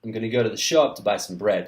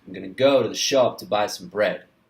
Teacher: I have reduced the function words and I have put more stress and emphasis on the content words.